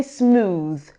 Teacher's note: When you say smooth, the oo sounds a long vowel, like in moon or spoon.